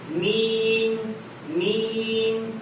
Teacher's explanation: میم میں دونوں ہونٹوں کی خشکی کا حصہ ملے گا باہر والا. میم کا مخرج دونوں ہونٹوں کی خشکی کا حصہ.